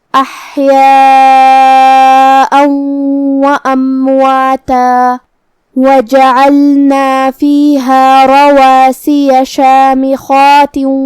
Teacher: خا کو ہم حلق کے اوپر والے حصے سے پڑھیں گے جو کہ وہ حروف التفخیم میں سے ہے، لہذا ہمیں خا کو بھاری آواز میں ادا کرنا ہے. · پھر جو کہ لام ساکن ہے لہذا ہم لام کو ظاہر کریں گے. کلمت رواسیہ میں را پہ زبر ہے تو را کا حکم ہے تفخیم. ہم حرف الرا کو بھاری آواز میں پڑھیں گے. کلمت شامخات میں یہاں حرف الخا ہے.